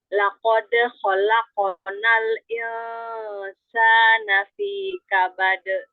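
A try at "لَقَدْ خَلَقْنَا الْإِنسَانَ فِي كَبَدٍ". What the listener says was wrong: Tebalkan lagi huruf-huruf yang tebal. Laqad khalaqnal insana fi kabad.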